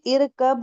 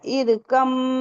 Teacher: तो हमें इरकब नहीं पढ़ना है, हमें पढ़ना है इरकम माना। मीम को ही 2 बार पढ़ना है, बा को नहीं पढ़ना है। बा का इदगाम हो गया है मीम में।